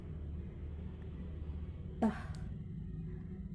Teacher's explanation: The place of articulation is alveolar. The manner of articulation is plosive. T sound include voiceless.